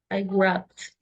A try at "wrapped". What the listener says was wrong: wrapped. No suena la E, suena directamente una D. I wrapped.